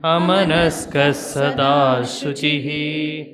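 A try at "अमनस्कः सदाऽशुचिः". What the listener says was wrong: You should pronounce it properly, that it should not appear like sada shuchihi. It is sada ashuchihi. Although the I is dropped, but the pronunciation will have a little elongation there to understand that it is not shuchihi.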